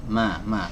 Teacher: huruf mim adalah huruf yang dikeluarkan dari G2 bibir ya keluarkan dari dua bibir yang ditempelkan antara bibir atas dengan bibir bawah